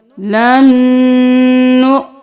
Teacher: یہاں پر واو نہیں پڑھیں گے، حمزہ کے اوپر جزم ہے جھٹکا دیں گے لن نؤمن۔